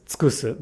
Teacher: in the verb tsukusu, the downstep occurs on the ku. Now, because the second u here is between a k and an s, it should get devoiced, but again, it's okay to pronounce it as tsukusu because the downstep falls here.